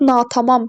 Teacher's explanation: Natamam sözündə vurğu sonuncu, yəni üçüncü hecaya düşür.